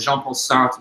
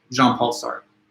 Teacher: it's a French name, so it's got those soft French R's that are kind of hard for the English tongue to pronounce · like this guttural kind of very soft R